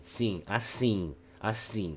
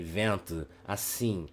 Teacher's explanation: at that moment I'm saying those vowels, I can feel my nasal cavity vibrating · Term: nasal vowel